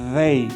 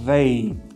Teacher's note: É o Z com a língua entre os dentes. Então você vai colocar a língua entre os dentes e vai falar um Z. Você vai ter vibração nas cordas vocais aqui, ó. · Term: TH voiced